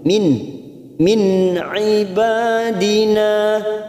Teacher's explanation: nun sukun bertemu Ain namanya bacaan idhar halq kita baca jelas tanpa mendengung